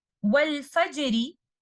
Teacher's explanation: Another point to remember, when we are choosing to stop on a word with Raum and the last letter of the word is letter Ra, we will recite letter Ra exactly the way we recite when we continue the recitation. In this example, Wal Fajri, letter Ra has a kasra. We will recite it light upon continuation.